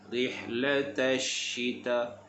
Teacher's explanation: shin bersifat dengan tafashi, bagi dia berhamburan udara. Rihlata syita, sebab shin makhrajnya di tengah lidah.